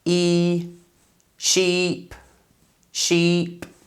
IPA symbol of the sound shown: i: